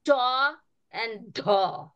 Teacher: they're both made with a puff of air, right? That's that aspirated sound.